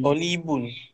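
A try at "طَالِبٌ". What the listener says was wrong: Tolibun. Panjang, tolibun. Tolibun. Tol dia panjang.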